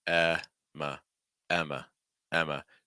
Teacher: notice that we're not really making that M sound too strong